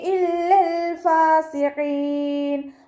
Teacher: ഖാഫ് ഇസ്തിഅലാൻ്റെ ലെറ്ററാണ്, തഫ്ഹീം ചെയ്തിട്ട് ഉച്ചരിക്കുക